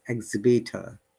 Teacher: there is no r sound because it is at the end of the word